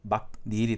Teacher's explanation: 뒤에 모음 이로 시작하고 단어와 단어가 만나기 때문에 니은을 첨가시켜줘서 막닐이 되죠. 자, 그 다음에 비음이 아닌 자음 기억과 비음인 자음 니은이 만나서 이 기억이 비음으로 변하는 비음화 현상이 일어납니다. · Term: 니은 첨가